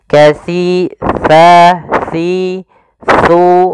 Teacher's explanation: tempat keluar hurufnya, yaitu ada di mana ujung lidah kita menempel dengan gigi seri atas. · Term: huruf sa